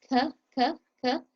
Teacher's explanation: So the kaf is a light letter, is not one of the 7 heavy letters. Ka, ka, ka comes from the back of your tongue touching your soft palate at the back of your mouth